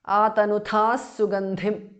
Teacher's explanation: Visarga changes to s.